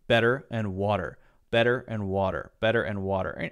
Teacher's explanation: But if you have the T there in this sort of situation where there's an R, an E-R after it, or often a lot of vowels after it, then Americans will say this very interesting thing called a light D sound